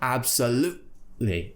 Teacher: imagine you've swallowed the T it's stuck in your throat and you need to tighten your throat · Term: glottal T